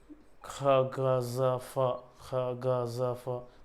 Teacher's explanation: है लेकिन ऐसा नहीं कि पूरा ही टच कर रहा है एक मिनिमम गैप सा रह जा रहा है और वहां से वायु रगड़ खाते हुए बाहर आ रही है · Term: संघर्ष व्यंजन